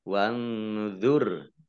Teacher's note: nun sukun bertemu dengan huruf dha bacaan ikhfa dibaca samar-samar